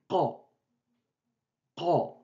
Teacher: On bloque la gorge et on libère tout d'un coup.